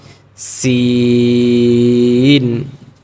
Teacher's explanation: সিন চিকন করে আওয়াজটা বের করতে হবে, শিন বলা যাবে না